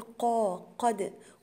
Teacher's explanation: حرف القاف عندي هنا مفخم وهو في أعلى درجات التفخيم لأن هو مفتوح، يبقى أي حرف من حروف التفخيم ولاقيه مفتوح يبقى هو من أعلى درجات التفخيم.